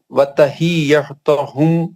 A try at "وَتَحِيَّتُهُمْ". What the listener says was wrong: تجدید آ گئی تو کیا بولا ہم نے, سختی سے پڑھنا. ہاں تجدید کو صحیح کریں.